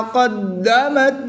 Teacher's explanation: دال مشدد ہے اور یہ حروف قلقلہ میں سے ہے, اور جب حروف قلقلہ مشدد ہوں تو ان میں قلقلہ خوب جماؤں کے ساتھ کریں گے. اس کو قلقلہ کبرا بھی کہتے ہیں.